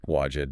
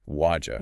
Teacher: the D plus Y makes a J sound, and the T in what flaps to a D sound before it. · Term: coalescence